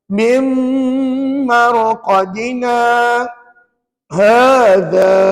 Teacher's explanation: Mesti ada gap. Mesti ada sempadan antara bacaan mim marqadina dengan hadza. Papa tak boleh sambung. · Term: saktah